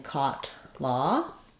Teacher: This one is rounded but lax, and it's a little bit more open than our O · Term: aw vowel